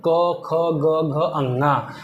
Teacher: क वर्ग पूरा क्या होता है कंठ से